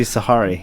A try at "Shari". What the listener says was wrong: Sherry. Sherry Lewis. Shari. Shari. Sherry. Wait, you know, Sherry, baby.